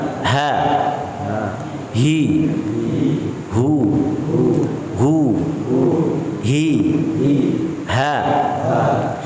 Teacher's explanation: H keluar di mana? Pangkal tenggorokan. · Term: huruf H